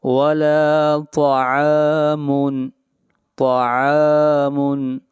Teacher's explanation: ولا طعام، طا کو موٹا پڑھیں گے، طا حروف مستعلیہ میں سے ہے۔ ولا طعام، عین کو کھینچ کر پڑھیں گے ایک الف کے برابر، یہاں پر الف مدہ ہے۔